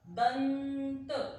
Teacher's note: जब बोला दंत, उच्चारण का समय कम लगा, दंत। अब हमारी जीभ ऊपर दांत के साथ जाकर चिपक गई और आवाज को बाहर नहीं आने दे रही, रुकावट पैदा कर रही है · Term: अनुस्वार